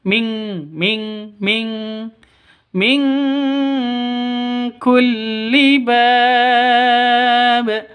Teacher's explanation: Cara bacanya samar didengungkan. Siap-siap ke huruf kafnya. Non matinya ditambah dengan ng bacanya ming